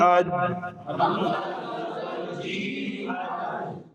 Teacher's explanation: زبان کا درمیان اوپر لگ گیا